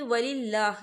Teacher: یہاں اللہ کا نام باریک پڑھا جائے گا کیونکہ اللہ کے نام سے پہلے زیر ہے